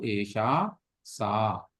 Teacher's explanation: यहाँ जी, एषा, सा, दीर्घ आकार है ना, बड़ा आ जिसको बोलते हैं, वो हमें बोलना है। यहाँ पर विसर्ग का प्रयोग, माने ह की ध्वनि नहीं आनी चाहिए। सह जी व साह नहीं, अपितु एषा, सा एवं।